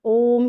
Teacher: उसमें ह्रस्व के तिगुना समय लगता है